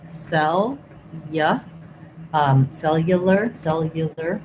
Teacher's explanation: in this letter U, it has a glide. So it's a y sound